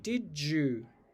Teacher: But if you're talking quickly, you'll tend to say did you, basically with a j, that affricate that in everyday English we usually write with the letter J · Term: palatalization